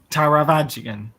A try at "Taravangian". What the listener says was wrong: I think there's an N in there somewhere that you missed out, but it's fine enough. Taravangian.